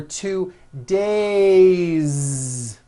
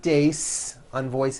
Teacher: It's days with a voiced Z ending.